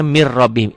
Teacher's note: Tulisannya min rabbihim, dibacanya mir rabbihim. Ini idgham bila gunnah, idgham tanpa dengung, tanpa ditahan. · nun mati ketemu ro. Nih, setiap huruf mati ketemu huruf bertasdid, huruf matinya jangan dibaca. Min jadi mir. Setiap nun mati, setiap huruf yang ada tanda matinya, ada sukunnya jangan dibaca.